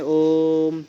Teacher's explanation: त्रिमात्रिक, जैसे हम किसी चीज़ को थोड़ा सा लंबा खींच के पढ़ते हैं, जैसे हम कहते हैं ओम, ठीक है, तो इस तरीके से पढ़ते हैं, वहाँ पर प्लुत होता है। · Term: प्लुत स्वर